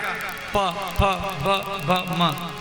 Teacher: ओष्ठ वर्ण जब दोनों होठ सटेगा